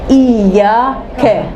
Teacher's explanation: اسی طریقے سے بولیں گے ایاک، کا نہیں، ایاک، منہ نہیں اٹھائیں گے، آ نہیں، فتحہ ہے نا، صرف منہ کھولنا